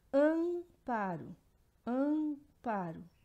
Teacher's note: o A e o M formam um som nasalizado que representa um único som, duas letras, um único som.